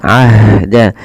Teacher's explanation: ha punya sifat namanya sifat hames jaroyan nafas ya hames nah ini hamesnya juga lembut ya harus kalau bisa ah dan dia punya sifat namanya rakhawah mengalir suaranya.